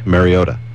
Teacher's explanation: the natural thing for anybody to do is to actually pronounce that T like a D